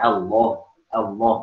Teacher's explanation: Lam tebal yang tadinya makhraj lamnya lebih maju daripada nun, ketika lam tebal ya agak mundur mendekati nun. Jadinya Allah.